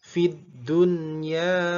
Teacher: khusus kata fid dunya salah satunya maka nunnya dibaca jelas